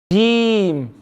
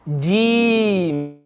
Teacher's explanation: It's when the center of the tongue, it touches the palate, the top part of the mouth.